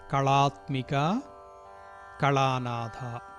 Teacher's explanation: ఈ రెండు చోట్ల కూడా లకారం కాదు అళ అంటే సరళ చోళ అందులో వచ్చేటువంటి లకారం.